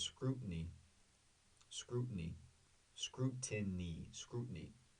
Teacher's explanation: The T, like we've talked about before, basically disappears. · The stress is on the first syllable, the ooh, scrutiny.